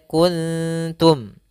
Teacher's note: Maka di sini bukan kuntum, tapi dia kuntum. Ya, suara nunnya disamarkan kepada huruf ta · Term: ikhfa